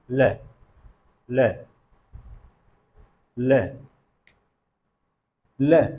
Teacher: जो जिह्वा है वो आके ताल में स्पर्श कर रही है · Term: पार्श्विक ध्वनि